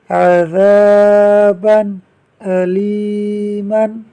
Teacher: عین زبر ع ذال الف زبر ذا عذا با دو زبر بن عذابا حمزہ زبر لام یا زیر لی علی میم دو زبر من علیمن عذابا علیما با پر دو زبر کی تنوین ہے، تنوین کے بعد آگے حمزہ آ رہا ہے جس پر زبر ہے، تو تنوین کے بعد حمزہ آ رہا ہے، اس لیے اظہار کا قاعدہ ہوگا، یعنی تنوین میں غنہ نہیں ہوگا۔